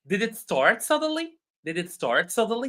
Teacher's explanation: since it is a question, it should be rising intonation.